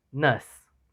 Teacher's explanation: It is a central vowel in both Standard Southern British English and South African English. A front vowel close to the Standard Southern British English is substituted in South African English together with a loss of length.